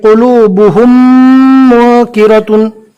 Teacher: जज्म वाली मीम के बाद मीम आ गई। अब मिलाकर गुन्ना के साथ पढ़ेंगे